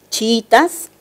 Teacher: Dos vocales cerradas iguales, pero la sílaba tónica es la segunda. Y eso quiere decir que la palabra se entiende como grave. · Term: hiato simple